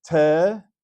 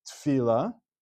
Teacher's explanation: Because it's a sheva under the first letter of a word, as we call it sheva berosh mila, a sheva at the beginning of a word, and it is pronounced as a sheva na. Some people might say this word as tfila, which would be making it a sheva nach, but that is not the correct way of reading this because it's a sheva under the first letter of the word.